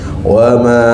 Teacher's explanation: Wama panjang ya. Sebab mak jaiz munfasil.